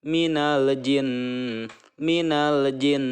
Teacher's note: Kemudian jin nun yang bertasdid gunnah ya. Jin tahan 2 atau 3 harokat